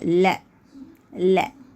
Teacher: நாவின் இரு பக்கங்கள் தடித்து மேல் பற்களின் அடியை தொடுவதால் பிறக்கும் எழுத்து ல. ல.